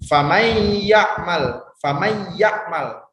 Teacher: matinya itu seolah-olah tidak ada atau dilebur ke huruf yang selanjutnya yaitu huruf ya makannya dapat dinamakan idghom karena hurufnya itu dilebur atau dimasukkan ke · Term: Idgham Bighunnah, idgham